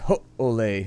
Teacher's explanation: in Hawaiian, if you have double vowels, you got to do a glottal stop. So you'd be like, ho-ole.